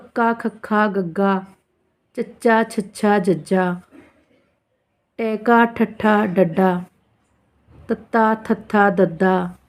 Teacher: ਇਨਾਂ ਵਿਅੰਜਨ ਧੁਨੀਆਂ ਦਾ ਉਚਾਰਨ ਹਵਾ ਨੂੰ ਪੂਰਨ ਰੂਪ ਵਿੱਚ ਰੋਕ ਕੇ ਇੱਕਦਮ ਛੱਡਣ ਨਾਲ ਹੁੰਦਾ ਹੈ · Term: ਡਕਵੇਂ ਵਿਅੰਜਨ